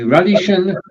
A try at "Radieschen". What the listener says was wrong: Yeah, pronunciation for Radieschen. So this is one of those words where, when we're talking about something little, we often add the ending chen. And radies just happens to end with an S, so it looks like as if it was a sh sound, but it isn't.